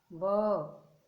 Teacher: वकारस्य दंतोष्ठम, व दांत और ओष्ठ दोनों काम कर रहे हैं